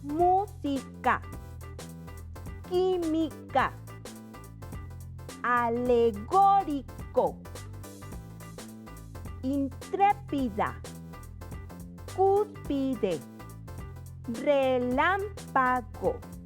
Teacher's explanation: Y entonces diremos que una palabra es esdrújula cuando la sílaba tónica sea en la antepenúltima